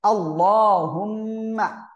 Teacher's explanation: আল্লাহ শব্দের লাম মোটা আওয়াজে পড়তে হবে